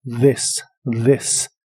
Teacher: La TH de esta palabra se pronuncia como una D vibrante